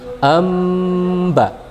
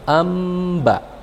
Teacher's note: masukkan bunyi nun ke dalam huruf ba seakan-akan ada mim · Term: iqlab